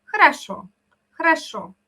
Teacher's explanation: Y si la palabra хорошо hay 3 O, solo una suena como O. ¿Ya? El resto decimos como algo más relajado, por eso suena más como A.